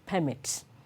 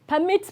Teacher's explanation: The noun is stressed on the first syllable, while the verb is stressed on the second syllable.